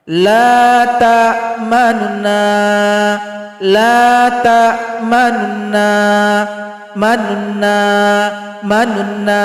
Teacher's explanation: bunyi nun dhamma yang tersembunyi tadi kita timbulkan setengah harokat. Jadi kita baca dengan samar-samar. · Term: raum